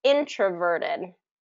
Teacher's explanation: it's going to be first syllable stress